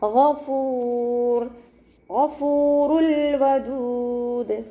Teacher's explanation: ഗൈനിൻ്റെ മഖ്റജ് നമ്മുടെ തൊണ്ടയുടെ ആദ്യ ഭാഗം അദ്നൽ ഹൽക്കാണ്, സൗണ്ടിന് അയിനായി പോവാതെ ആ സൗണ്ടിൽ തന്നെ ഉച്ചരിക്കാൻ ശ്രദ്ധിക്കുക കേട്ടോ.